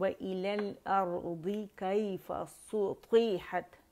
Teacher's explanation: सू पे complete rolling है